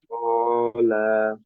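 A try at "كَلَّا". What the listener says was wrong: আচ্ছা লাতে কয় আলিফ টান হবে? লার উপরে, হ্যাঁ আপনি একটু টানের টোন আসছে, এটা কি বুঝতে পারছেন? লা, ক, লা, আপনি যে, একটু বলেন তো, লালিলু। হ্যাঁ, তাহলে কলা, কলা।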